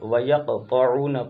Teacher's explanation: طا کو موٹا کریں گے، قاف پر قلقلہ کریں گے